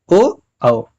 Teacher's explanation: तो यह भी अगर दो वर्ड बोले जाते हैं मिक्स करके तो इसके भी क्या हो जाएंगे, दो उच्चारण स्थान होंगे, कंठ और ओष्ठ दोनों होंगे। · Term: कंठ ओष्ठ